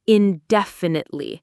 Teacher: There are five syllables. The main stress is on the second syllable.